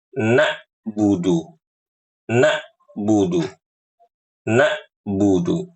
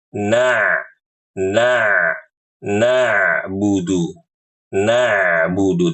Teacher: mengubah huruf Ain menjadi Hamzah